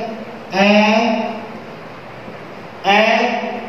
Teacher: ऐ ऐ यानी वायु है फेफड़ों से उठने वाली जो वायु है नाक तथा मुख दोनों से बाहर निकल रही है। ऐ ऐ मुख से भी और नाक से भी, अपेक्षा करते मुख से अधिक निकल रही है, नाक से कम निकल रही है लेकिन नाक से भी निकल रही है। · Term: अनुनासिक